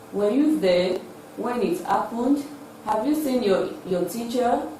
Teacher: these are questions that require yes or no, and they are expressed with a rising tune